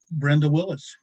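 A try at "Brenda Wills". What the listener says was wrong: Wills, not Willis.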